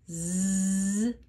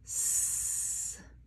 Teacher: Z is voiced I feel my voice working but s is unvoiced my voice is off what is the same though my mouth is in the same